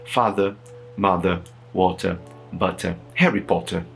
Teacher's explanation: O R depois de vogal no inglês britânico não é pronunciado. · Perceba que não existe um R pronunciado, ele existe ali na palavra, ele existe ali na escrita.